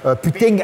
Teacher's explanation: On fait comme si on allait prononcer un G, mais on s'arrête. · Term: appendice consonantique vélaire